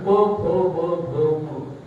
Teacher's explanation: आणि प फ ब भ म ओठ फक्त एकमेकावर लागतात.